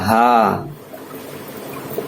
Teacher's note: یہ چھوٹا ہا ہے، ہا، یہ سینے کی طرف جو حلق ہے وہاں سے نکلے گا، ہا۔ ان دونوں میں فرق ہے، ہا ہا، ہا ہا، یعنی ابھی آدمی تھکتا ہے تو کیسی آواز نکلتی ہے، ہا، اور یہ چھوٹا ہا، حمزہ یا۔